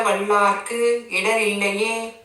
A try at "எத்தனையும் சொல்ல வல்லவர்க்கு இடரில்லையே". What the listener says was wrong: வல்லார்க்கு லாவிட்ட கால் இருக்கா? சொல்ல வல்லவர்க்கு. எத்தனையும் சொல்ல வல்லவர்க்கு இடரில்லையே.